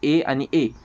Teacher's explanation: कंठ आणि टाळू दोघा दोघांच्या आघातानं ज्याचं उच्चारण होते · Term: कंठ तालु